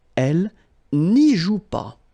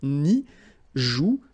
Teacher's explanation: the ne followed by a vowel, they don't really get along, so should go away